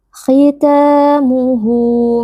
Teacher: huruf kha juga dia memiliki sifat tafkhim atau tebal. Jadi kita mengangkat sedikit pangkal lidah walaupun tidak setebal saat fathah atau saat dia itu dhammah.